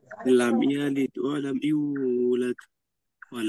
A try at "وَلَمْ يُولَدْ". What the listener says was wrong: ওয়ালাম ইউলাদ, এত টান হবে না, এক আলিফ মাত্র হবে, ওয়ালাম ইউলাদ।